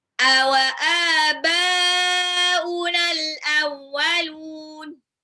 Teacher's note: Alifnya itu mad tabi'i 2 harokat, ba-nya itu ada harokat alis ketemu hamzah dalam satu kata, artinya itu mad wajib mutasil harus 6 harokat